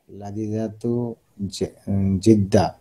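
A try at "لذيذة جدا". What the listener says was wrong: লাযিযাতুন জিদ্দান। উজ্জ্ব রেখা দিলে, শেষের এটা উজ্জ্ব রেখা দিলে হবে।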